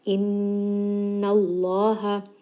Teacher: make sure that you are giving proper ghunna and then switching to that heavy lam in the name of Allah.